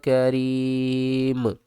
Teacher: یہاں پر یا ساکن سے پہلے زیر ہے، حروف مدہ، اس کو ہم 3 سے 5 الف کی مقدار کھینچ کر پڑھیں گے